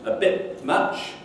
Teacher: the t is turned into a p and it leaks it introduces a feature of the following billion